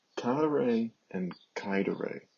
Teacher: it's cadere and caedere with the accent on the first syllable in each case